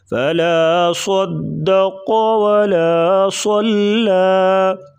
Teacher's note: گا، قاف کو بھی پر پڑھیں گے، فلا صدق ولا صلى صاد کو پر پڑھیں گے اور لام کو باریک پڑھیں گے ، صاد کو پر پڑھنے کے ساتھ لام کو بھی پر